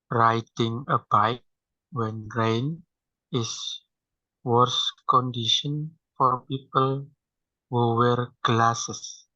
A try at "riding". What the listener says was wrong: Almost. That's why it's writing instead of riding. Okay, so you said riding a bike. So the D is too stressed. Because the D is stressed, closed caption detected it as T instead of D. So riding a bike.